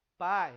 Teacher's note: tenho força lá em cima e depois uma força mais fraquinha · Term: ditongo decrescente